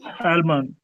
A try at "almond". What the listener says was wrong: Almond. No L sound.